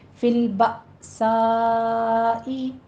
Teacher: فل با میں حمزہ ساکن ہے، تھوڑا سا جھٹکا دیں گے۔ سائی میں مد متصل واجب ہے، یہاں پہ ہم 5 کاؤنٹ کریں گے۔